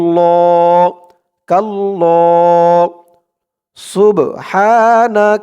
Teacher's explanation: খাড়া জবর দিয়ে এক আলিফ টান দিয়ে পড়তে হবে